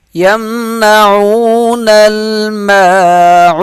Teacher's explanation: عین واو پیش عو، ایک الف کے برابر کھینچ کر پڑھیں گے